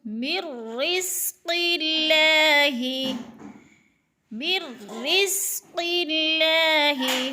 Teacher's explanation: نون ساکن کے بعد را مشدد ہے تو ادھر ادغام ہو رہا ہے ، مر، را کو تھوڑا سا سختی سے پڑھیں گے، رزق